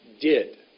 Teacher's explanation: my tongue goes up behind my teeth for did